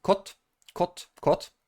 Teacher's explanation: In Polish, it's of course with the D at the end, but we always say the voiceless consonant at the end, so it will be pronounced like kot, kot, kot